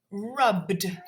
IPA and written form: rʌbd (rubbed)